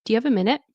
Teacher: And it's a polite request. You can hear the rising tone.